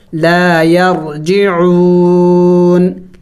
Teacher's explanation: وقف کریں گے تو ہم نے اس نون کو سائلنٹ کرنا ہوگا، یعنی ساکن کرنا ہوگا، لا یرجعون، لیکن آخر میں نون کی آواز نکلنی چاہیے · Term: نون ساکن